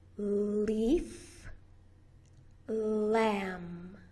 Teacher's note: You put the tip of your tongue to the alveolar ridge, the bumpy part right behind your teeth. Your voice box is on, and it's a long, smooth, continuous sound.